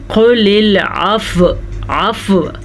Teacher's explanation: فا کے بعد ہلکی سی واو کی آواز بھی آئے گی